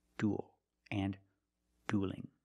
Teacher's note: the word dueling and it's not duelling don't pronounce that e it's one sound o plus a dark L